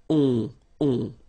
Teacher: Okay? Remember, you don't pronounce the final s, you get the on sound. Okay? Nasal in your nose